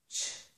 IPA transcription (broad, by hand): tʃ